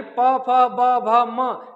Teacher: जैसे आप बोलेंगे प, फ, ब, भ, यानी प, फ, ब, भ, म, ये वर्ड ऐसे हैं जो बिना ओठ के स्पर्श किए बोले ही नहीं जा सकते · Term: ओष्ठ वर्ड